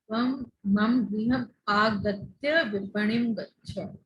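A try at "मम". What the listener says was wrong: But not to say mum, mama, because it is full. Not to say mum, mama. Mama.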